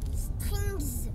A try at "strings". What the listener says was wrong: Strings. Faut bien prononcer le S à la fin, strings.